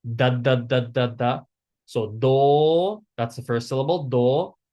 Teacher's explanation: it's interdental. It's the D that's between your between your teeth. So you bite your tongue for the first D.